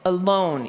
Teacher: the second syllable is the one that's accented because your chin went down